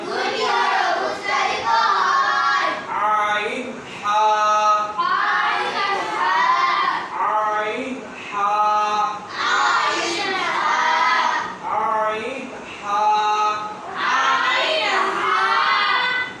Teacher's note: হলকের মধ্যখান হইতে দুইটি হরফ উচ্চারিত হয়